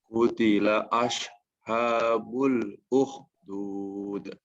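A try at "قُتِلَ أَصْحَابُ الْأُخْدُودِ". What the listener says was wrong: Kemudian selanjutnya adalah makhraj pada shad ya. Yang barusan terdengar itu lebih dekat kepada makhrajnya shin. Asha, utila asha. Nah, ini dekat dengan shin. Yang benar adalah utila aus. Dia sama seperti S ya. Penyebutan Indonesia sama seperti S, tapi S yang di-O-kan. Ya, ada ditebalkan.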